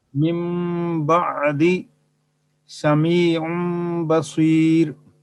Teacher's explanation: इस्तिलाह कुर्रा में और इस्तिलाह कुर्रा में नून साकिन या तनवीन के बाद बा आ जाए तो नून साकिन और तनवीन को मीम से बदलकर गुन्ना और इख्फा के साथ पढ़ना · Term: इक़लाब